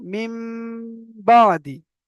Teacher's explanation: নুন সাকিনের পরে বা এসেছে তাই নুন সাকিনকে মিমের দ্বারা পরিবর্তন করে পরিমাণ গুণনা করে পড়তে হবে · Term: একালি পরিমাণ গুণনা